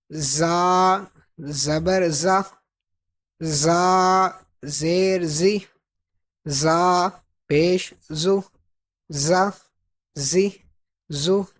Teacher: یہ صفیریہ حروف میں سے ہے تو اس میں سیٹی کی آواز آئے گی